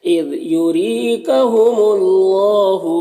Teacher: ज़ाल में कलकला ना होने पाए, इसको ख्याल रखना है, और ज़ाल को बारीक पढ़ना है · यूरी रॉ के नीचे ज़ेर, रॉ को बारीक पढ़ना है, और यहाँ पर या मद्दा है, एक अलिफ के बराबर खींचेंगे। यहाँ पर अल्लाह के लाम को पुर पढ़ेंगे क्योंकि इससे पहले मीम के ऊपर पेश है, और खड़ा ज़बर है तो एक अलिफ के बराबर खींचेंगे।